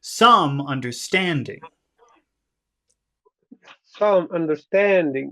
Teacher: in this case it would be better to emphasize stand